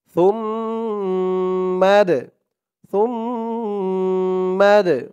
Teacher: দালটা কলকলার হরফ, ধাক্কা দিয়ে পড়তে হবে